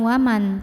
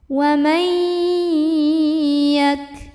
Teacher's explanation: Karena ada nun sukun yang ketemu sama huruf ya. Maka nun sukunnya lebur ke huruf ya. Jadi bukan waman tapi wamai. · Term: idgham bi gunnah